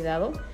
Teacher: sonoridad es Sonora porque las cuerdas vocales vibran ante su pronunciación